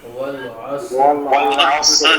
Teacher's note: صاد بھی ساکن ہے اور را بھی ساکن ہے اور دونوں موٹے ہیں